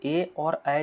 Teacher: तो देखिए ए और ऐ जो है इसे इसका उच्चारण करेंगे तो कंठ और तालु दोनों के सहयोग से होता है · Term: कंठ तालव्य वर्ण